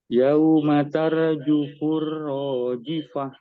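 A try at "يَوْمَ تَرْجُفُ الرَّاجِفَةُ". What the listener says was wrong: Ra-nya ini ditebalkan ya. Kayak cadel gitu. Tarjufur. Bukan Nah. Yauma tarjufur rajifah.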